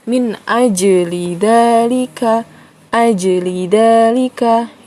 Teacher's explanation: ada tanda sukunnya itu dibacanya dipantul ya Jadi tidak langsung dibaca gitu aja tapi dipantulkan membacanya